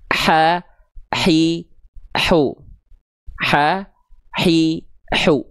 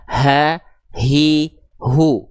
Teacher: Kalau H kecil penekanannya di tengah tenggorokan, kalau H besar di pangkal tenggorokan